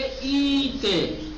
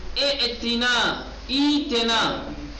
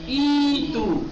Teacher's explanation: حمزہ ساکنہ کو یائے مدی کی طرح پڑھا جائے گا